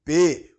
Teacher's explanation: P que é obstruído na altura dos lábios então é um som bilabial